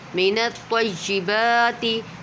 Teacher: میم زیر می، نون تو زبر نت، مینت، تو یا زبر توئی، مینت توئی، یا زیر ی، مینت توئی، با کھڑا زبر با، مینت طیبا، تا زیر تی، مینت طیباتی، تو کو پر پڑھیں گے کیونکہ تو حرف مستعلیہ میں سے ہے